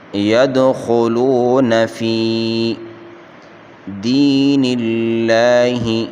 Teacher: دی یا مدہ ہے، اس کو 1 الف کی مقدار کھینچ کر پڑھیں گے